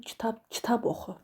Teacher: Kitab sözünü oxu sözünə nisbətən daha qüvvətli deyirəm. Deməli, burada kitab məntiqi vurğu hesab olunur.